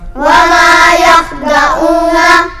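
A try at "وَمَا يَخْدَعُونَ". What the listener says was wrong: वमा पर आवाज़ नाक में नहीं जाएगी। वमा यख़दऊन।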